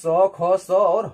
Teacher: क्योंकि जब भी इसका हम उच्चारण करते हैं अपने मुख से तो जो ध्वनि जो हवा हमारे मुंह से निकलती है वो रगड़ खाते हुए बाहर निकलती है, उसे ही हम ऊष्म व्यंजन कहते हैं। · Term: संघर्षी व्यंजन